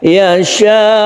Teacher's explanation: Kemudian cara membaca sukun hamzah yang ketika dia itu wakaf, kalau mad wajib mutasyir ini dibaca nabr namanya, yaitu dinaikkan sedikit nada kita · Yasha ini juga panjang sekali, mad wajib yang kita wakafkan. Ini panjangnya sampai 6 harakat atau 3 alif.